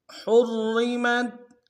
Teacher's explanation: اب تفصیل میں پڑھتے ہیں۔ حرمت ہا کو را کے ساتھ ملانا، را کو موٹا ادا کریں گے۔ پہلا را موٹا ہوگا، دوسرا باریک ہو گیا۔